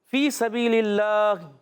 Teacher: فی سبیل اللہ، فا یا زیر فی یا مدہ ہے، ایک الف کھینچیں گے. فا کا مخرج اوپر والے دانتوں کے کنارے جب نیچے والے ہونٹ کے تر حصے سے لگتے ہیں تو ادا ہوتا ہے فا.